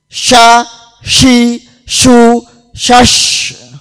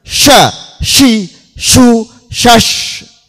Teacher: Tafasyi niku berhamburannya angin di dalam mulut.